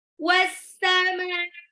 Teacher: Mimnya itu panjang. Mad tabi'i bertemu dengan hamzah dalam satu kata ya. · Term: mad wajib mutasil